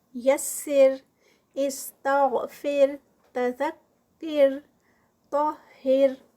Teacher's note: تو یہ تمام صورتوں میں ہمارے پاس را جو ہے وہ لائٹ پڑھی جائے گی